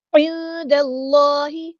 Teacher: عین کو مستحلق یعنی مڈل تھروٹ سے ادا کرنا ہے، اور نون ساکن کے بس کو یہاں ہم چھپا دیں گے۔